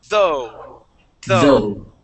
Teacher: you're going to stick your tongue between your top and bottom teeth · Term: th sound